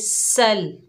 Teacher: सीन के ऊपर ज़बर है, आगे लाम साकिन है, सीन को लाम साकिन से मिलाएंगे, सीन में सीटी पैदा होगी, सख्ती वाला हरूफ है